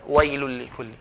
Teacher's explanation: Lam and ra, they will not have ghunna. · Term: without ghunna